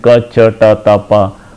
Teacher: the oral cavity is completely closed at different places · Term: unvoiced stop consonants